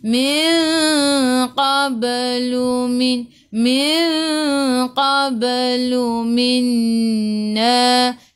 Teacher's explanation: Nun tak ada sukun bertemu dengan nun di atasnya ada sabdu. Idgham ma'al gunnah masuk bersama dengung-dengung 2 harakat.